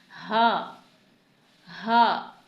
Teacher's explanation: हा को हमें सीने से अदा करना है, यानी हमें सीने में इसकी आवाज़ महसूस हो, हा हा। आप सीने पर हाथ रख के इस हा को महसूस कर सकते हैं।